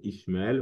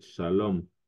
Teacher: Le S peut parfois se prononcer SH, dépendamment de l'endroit où on se trouve.